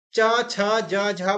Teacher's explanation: बोलते समय हमारी जो जीव होती है वो तालू में लगती है इसलिए ये तालव्य है